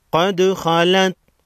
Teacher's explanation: قاف حروف مستعلیہ میں سے ہے، موٹا پڑھیں گے۔ دال ساکن کو ہلا کر پڑھیں گے۔ دال حروف قلقلہ میں سے ہے، خا کو بھی موٹا پڑھیں گے۔